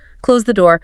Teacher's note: First is falling intonation. Your voice goes down at the end.